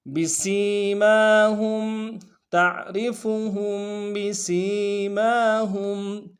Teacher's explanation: ہا کو میم ساکن کے ساتھ ملانا ہے، میم ساکن میں غنہ کریں گے۔